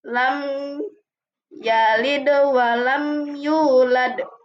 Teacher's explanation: bunyi mim disuarakan dengan terang dan jelas tanpa berdengung di bibir dengan mulut tertutup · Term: izhar syafawi